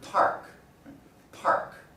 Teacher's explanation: when i pronounce words that have a voiceless stop at the beginning of a stressed syllable i pronounce it with this burst of air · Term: aspiration